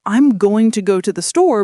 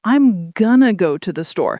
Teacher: In natural, relaxed speech, we don't actually say going to with full pronunciation. We reduce it to gonna. So I'm going to go to the store becomes I'm gonna go to the store.